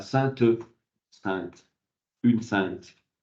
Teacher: Et en l'occurrence, votre camarade l'a dit, le T va s'entendre, c'est-à-dire qu'on va passer de saint à sainte, sainte, une sainte.